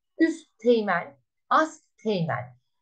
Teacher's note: Üst ve ast kelimeleri teğmen isimleriyle birleştiğinde üst ve asttaki T'ler düşer. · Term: ünsüz düşmesi